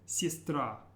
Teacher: and watch your stress it's not siestra but it's sistra and the emphasis is on the very last syllable of the word